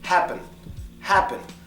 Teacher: The E sound in this word gets the schwa.